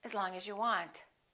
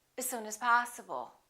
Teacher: The vowel in the preposition generally becomes the neutral sound